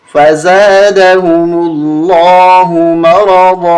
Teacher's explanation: را کو موٹا کریں گے، ضاد کو موٹا کریں گے